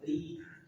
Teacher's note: Kemudian ro ujung lidah bertemu dengan gusi dua gigi seri atas. Tipiskan karena dia berharakat kasrah.